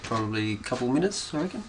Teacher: In English, statements usually end in a falling tone. The falling tone at the end tells the listener that the statement is finished.